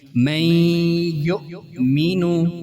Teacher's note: ان کی مثال پہلی نون ساکن کی من یؤمنو، یہ نون ساکن کی مثال، اس میں نون ساکن کے بعد یا آئی ہے جو کہ ینمو میں سے ایک حرف ہے، لہذا یہاں غنہ ہوگا